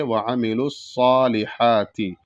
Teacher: بڑا ہا کو حلق سے ادا کریں گے